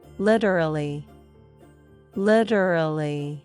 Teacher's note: The T becomes a quick D sound.